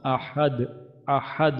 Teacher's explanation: এখানে হা আমাদের হলকের মাঝখানে